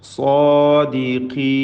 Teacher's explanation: സാദിഖീൻ, സ്വാദിനും അതിൻ്റെ ദീർഘാക്ഷരമായ അലിഫിനും തഫ്ഖീം കൊടുക്കണം. ഖാഫിന് കസ്റാണ്, കുറഞ്ഞ തഫ്ഖീം മാത്രം നൽകി ഉച്ചരിക്കുക.